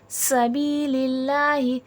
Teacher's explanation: سین حرف صفیر ہے، سختی سیٹھی کے ساتھ پڑھا جائے گا. بی میں یا مدہ، یا ساکن سے پہلے زیر ہے، تھوڑا کھینچ کے پڑھا جائے گا.